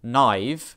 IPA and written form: naɪv (naïve)